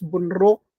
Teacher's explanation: in Binangonan, oftentimes the D is pronounced as an R.